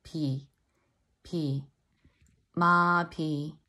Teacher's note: it's a slight air is coming out of my mouth when I say that word